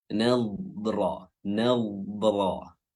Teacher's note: huruf ra-nya tebal karena berharakat fathah.